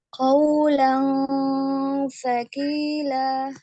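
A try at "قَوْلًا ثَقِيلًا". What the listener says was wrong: Lagi ditipiskan. Qawlan thaqila. Nah, siap-siap lidahnya ke huruf fa ya, makhrajnya huruf fa, fa gitu ya. Nah, tapi tidak sampai nempel.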